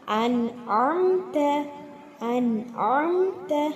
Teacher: நூனுக்கு அப்புறம் ஐன் இருக்குது. ஸோ இந்த நூனை தெளிவாக ஓதணும்.